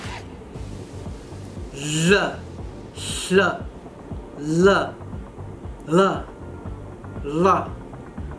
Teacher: We can release the sound by the sides of the tongue, so what is known as laterally. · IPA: /l/